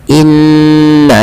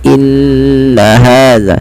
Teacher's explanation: ada bacaan gunnah pada lafal nun berharokat tasydid. Maka caranya adalah menahannya.